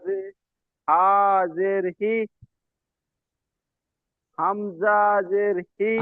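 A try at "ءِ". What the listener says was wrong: হামজা টান হয়ে যাচ্ছে, দুটো অক্ষর টান হয় না, আলিফ এবং হামজা, আপনি সে হামজা টান দিয়ে বসে আছেন। হামজা জের ই।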